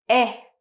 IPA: e